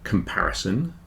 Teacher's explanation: the second syllable is stressed the second syllable is much bigger